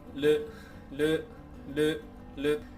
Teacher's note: 日本語のルは歯茎の方に舌を一度だけ当てて音を出しています